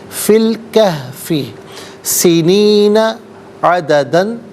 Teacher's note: درمیان میں سے الف یعنی حمزہ کو حذف کریں گے۔